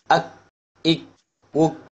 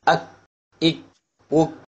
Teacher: தமிழில் இதை சொல்கிறதா இருந்தால், இந்த எழுத்து காஃபுடைய மஹ்ரஜுக்கு சற்று முன்னால் வெளிப்படும். This letter is slightly in front of the காஃப், அதாவது the inner most part of the tongue towards the mouth touching the roof of the mouth opposite it.